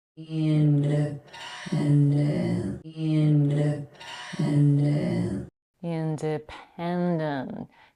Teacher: In English, we aspirate a voice that stops p, t, and k most of the time when they come in the beginning of a word, but also in the beginning of a stressed syllable, which is the case here. She puffs a little bit of air after the p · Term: aspirated p